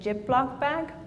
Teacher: she's producing Z as J